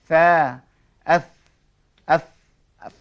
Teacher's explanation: Istifal bunyi sentiasa tidak tebal tetapi tipis